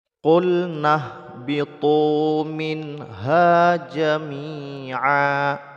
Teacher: bertemu dengan ha hukumnya izhar izhar itu artinya jelas maksudnya adalah membaca Nun syukunnya dengan jelas tidak didengungkan